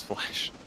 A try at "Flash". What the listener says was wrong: No, Flash, not Flesh. You said Flesh.